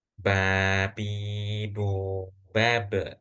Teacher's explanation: kalau ba yang salah karena keluar lewat hidung anginnya, udaranya.